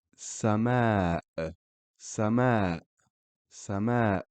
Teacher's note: it's like a hiccup or a stop of pronunciation of a vowel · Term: sukoon